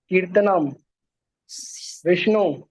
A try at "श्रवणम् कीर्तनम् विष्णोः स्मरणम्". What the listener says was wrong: विष्णु नहीं, स्मरणम भी तो आएगा। श्रवण, श्रवणम, कीर्तनम, स्मरणम विष्णु। हाँ, स्मरणम भूल गए तुम। स्मरणम तो नहीं बोले तुम, तुमने श्रवणम कीर्तनम विष्णु बोला तुमने।